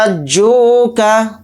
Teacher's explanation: इस मद को हम 5 अलिफ की मिक़दार खींच कर पढ़ेंगे हा अलिफ ज़बर हा के साथ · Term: मद्द लाजिम